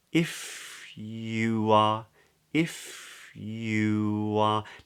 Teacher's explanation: notice how my lips then go from rounding for the you vowel into opening for the are